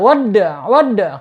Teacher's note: Dan di sini huruf dal, wadda, qalqalahnya qalqalah sugro ya, mantul ya. Ada di antara 2 huruf hijaiyah yang berharokat, yaitu wawu fathah dan ain domah ya.